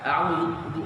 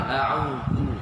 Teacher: Zu mesti dikeluarkan lidah sedikit, menunjukkan perbezaan antara zal dengan zai.